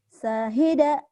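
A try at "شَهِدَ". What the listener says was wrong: Nggak ada yang panjang. Syahida. Syahida.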